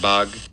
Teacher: at the very end, we get a nice clear stop release burst